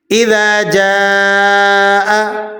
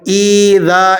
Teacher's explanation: اب حمزہ کے نیچے زیر ہے، آپ نے اسے کھینچنا نہیں ہے، کھینچ کر نہیں ادا کریں گے۔ ایذا اس طرح سے پڑھ دیا جاتا ہے، درست نہیں ہے۔